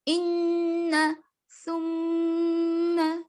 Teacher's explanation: نون کی آواز آئے گی لیکن ناک میں گنگناہٹ پیدا کرے گی. یعنی منہ بند رکھیں گے, ناک میں گنگنائیں گے نون کو. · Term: غنہ